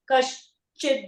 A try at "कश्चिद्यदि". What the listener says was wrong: And then Kashchit, Kash, Sh should come, not Kas. Kash. Kaschidyadi.